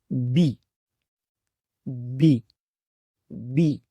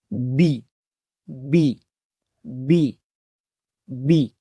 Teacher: ہونٹوں کے اندر والے حصوں کو آپس میں ملانے سے اس حرف کی آواز جو ہے وہ ادا ہوتی ہے۔ تو اس کی آواز ہوگی بی بی بی۔ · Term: حرف با